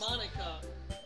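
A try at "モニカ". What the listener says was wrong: That's not Monica. Monica is an American word. It's Monika. You pronounce every vowel.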